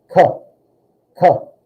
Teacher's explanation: the sound comes from further back in your mouth like it comes off the roof of your mouth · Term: k sound, K sound